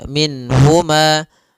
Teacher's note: Nun di sini harus jelas karena bertemu dengan huruf ha, maka tidak boleh ditahan. Misalnya ditambah dengan gunnah min huma, ini enggak boleh.